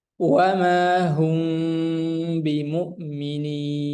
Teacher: Adapun kalau mim sukun bertemu dengan ba yang kita pelajari sekarang, ini hukumnya ikhfa syafawi, maka cara membacanya parut kedua bibir dikatupkan ringan dan didengungkan 2 harokat